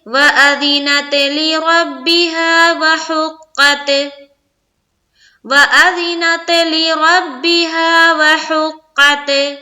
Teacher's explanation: غلطی یہ ہوئی کہ تا میں بھی قلقلہ کر دیا یہاں پر، اور یہاں پر جب وقف کر رہے ہیں تو یہاں پر بھی قلقلہ ہو رہا ہے، جو کہ ہوتا ہے زبردستی کا قلقلہ۔